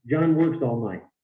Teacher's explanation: every word is a content word every word is stressed